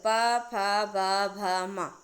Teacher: पा उपपधीयाना मोष्ठव, यानी छोटा ऊ बड़ा ऊ पा वर्ग, पा वर्ग पा फा बा भा मा, इनका जो उच्चारण स्थान है वह ओष्ठ है। जब आप प बोलेंगे तो आपके दोनों होठ आपस में टच करेंगे